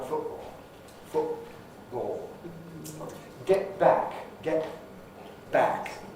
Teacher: Glottal stop for T before a consonant, before an obstruent at any rate, is certainly part of received pronunciation. · for my generation it's quite normal to have a glottal stop for T before an obstruent. That's a plosive, fricative or affricate.